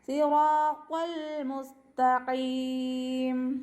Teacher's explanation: തൊണ്ടയോട് അടുത്ത ഭാഗത്തു നിന്നാണ് ഖാഫ് വരുന്നത്. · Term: ഖാഫിൻ്റെ മഖ്റജ്